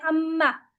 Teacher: मीम पढ़ना है तो आप आवाज निकालते हैं गुन्ना के साथ, इसमें प्लस हो जाता है गुन्ना।